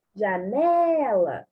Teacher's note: O né, aquele que eu pronuncio por maior tempo, a sílaba mais forte. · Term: acento tônico